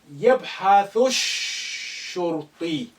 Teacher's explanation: يبحث Again, alif is silent because it's not at the beginning. Lam is silent because shin, which is a sun letter, after it, and is carrying the shadda. Therefore, you link the thu with the first shin, which is carrying sukun.